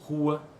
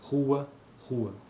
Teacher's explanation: o fonema R em posição inicial pode realizar-se em nossa língua como alveolar ou R velar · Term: variantes são livres